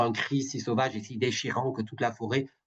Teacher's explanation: L'allitération de la consonne fricative voisée, le son résonne tel le roulement de l'orage.